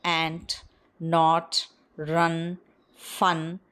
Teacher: So the soft palate is lowered to allow a free passage of air through the nose. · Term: voiced alveolar nasal